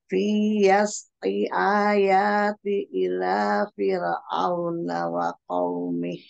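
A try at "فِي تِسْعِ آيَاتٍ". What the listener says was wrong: Fi tis'i aya. Ada ainnya? Ain kasromi? Taknya? Tanwin kasroh.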